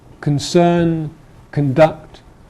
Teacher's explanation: another north of england thing is that there is some lack of weak vowels